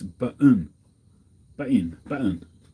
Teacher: you just miss out the t it's just like a soft sort of stress rather than a t sound · it's become very common in america just to miss out the double t